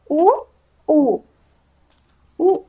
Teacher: फिर उ, उ, उ के उच्चारण में प्रयोग किया जा रहा है ओष्ठ। उ के उच्चारण में ओष्ठ का प्रयोग हो रहा है